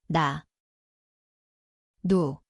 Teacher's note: koht on keeleots, ülemine igeme.